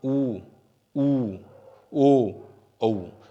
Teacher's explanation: इन चारों के अंदर होठों का आकार क्या होता है, वृत्त रूप लेता है। तो ये ऊ, ऊ, ओ, औ, ये 4 ध्वनियां हमारी क्या हैं, वृत्ताकार स्वर कहलाती हैं।